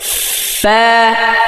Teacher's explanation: فا এটা নিচের ঠোঁটের পেট কিন্তু, হ্যাঁ, এই ওপরের দাঁতের সামনের উপরে 2 দাঁতের আগা নিচের ঠোঁটের পেটে লাগাতে হবে